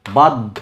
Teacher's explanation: ধটা একটা অল্প উচ্চারণ হবে, একটা বেশি উচ্চারণ হবে